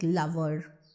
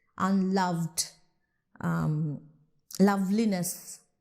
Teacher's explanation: whenever we are using any derivative of love, we are still stressing on love. Even when love is not the first syllable, for example, in unloved.